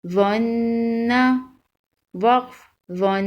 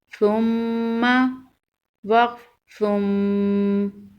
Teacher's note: مشدد حرف کو سختی کے ساتھ ذرا رک کر پڑھتے ہیں۔ نون مشدد اور میم مشدد پر غنہ کریں گے۔